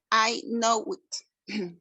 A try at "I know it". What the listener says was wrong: No, no it. No it. Sin hacer pausa. I know it.